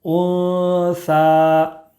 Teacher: نون ساکن کے بعد حروف اخفا کے 15 حروف میں سے ثا ہے، اس لیے نون ساکن کی آواز کو ناک میں چھپا کر پڑھیں گے۔